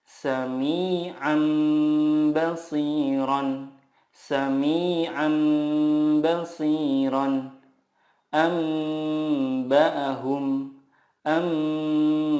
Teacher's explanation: Cara membacanya, mengganti nun sukun dengan mim sukun dan disertai gunnah 2-3 harokat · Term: iqlab